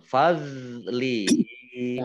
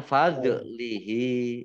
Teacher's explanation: Dok-nya ini bukan kol-kolah ya. Jangan dimantulkan. Fadlihi. Jangan fadlihi.